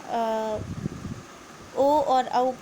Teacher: ओ और औ का उच्चारण स्थान कंठ और ओष्ठ से है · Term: कंठ ओष्ठ